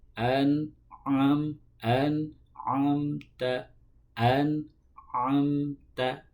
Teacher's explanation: ain itu harus diingat tempat keluarnya adalah dari tengah tenggorokan.